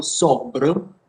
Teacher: In the first example, sobre, we have the Francavillese consonant cluster plus the Celiese final schwa